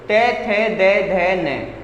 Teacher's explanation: दंत जो बोलते हैं जिसमें जीभ दांतों से लगती हो